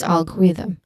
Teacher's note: Th sound is voiced.